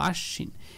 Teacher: বফালাটা যুক্ত হয়েছে শয়ের সাথে, ওই শটাকে দুইবার বলবো